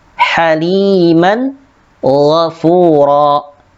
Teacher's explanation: terdapat yaitu tanwin bertemu dengan huruf gha. Dibaca jelas, haliman ghafura.